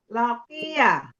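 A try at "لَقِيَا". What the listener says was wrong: Ya-nya panjang, ada tambah alif. Lakia.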